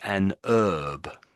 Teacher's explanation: they would say an herb, so they would miss out the H.